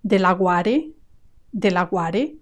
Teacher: Here the stress is going to be on the second A.